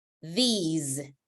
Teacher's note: the second one, it's a long sound, but the most important thing is that it has the Z sound.